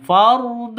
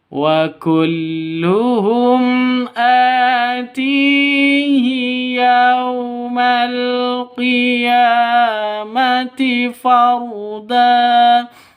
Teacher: di tipis harus tebal harus ditebalkan fard dan getarannya tidak boleh lebih dari tiga